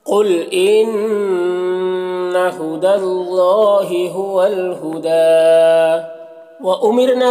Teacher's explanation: इन्ना नून मुशद्दद गुन्ना के साथ पढ़ेंगे